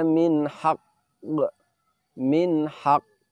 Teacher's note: kita tahan sedikit. Sejenak untuk menyempurnakan pengucapan tasdid baru dilepaskan sifat kolkolahnya.